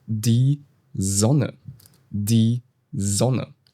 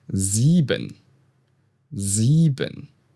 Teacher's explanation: At the beginning of a word, when it comes before a vowel, it usually sounds like the English Z.